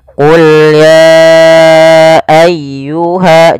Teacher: Maka apabila ada kata ya ayyuha, biasanya kita sebut dengan bacaan mad jaiz munfasil yang kita panjangkan sepanjang 4 harokat. Kemudian pada lafal ayyuhal kafirun ditekan ya-nya.